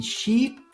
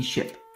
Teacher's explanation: a few milliseconds of time separates the length of E in sheep and I in ship